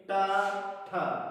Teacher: टा वर्ग बोलने में जो हमारी जीभ है वो मूर्धा को टच करती है, तो इसलिए बोला जाता है का वर्ग कंठ से, चा वर्ग तालु और टा वर्ग मूर्धा से।